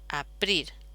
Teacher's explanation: la pretónica se va a sincopar y esta E desaparece. Aprir. Y luego que esta P, que es sorda, sonoriza.